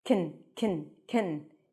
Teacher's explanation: the can is reduced here can can can you don't hear the a really